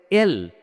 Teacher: Put your finger on your throat, then pronounce the letter like L. You feel or you notice a slight vibration in your neck or throat. That is because it's a voice sound.